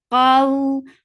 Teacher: qaf is heavy, and then this waw is lean. When you are attaching fatha with waw, it is soft